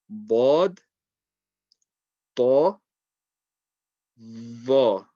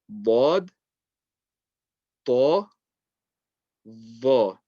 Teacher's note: With bod, it's more the side of the tongue touching the side of the back teeth. That's why it sounds a little bit more muffled.